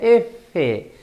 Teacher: el labio inferior se aproxima al borde de los incisivos, así. Así. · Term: labiodental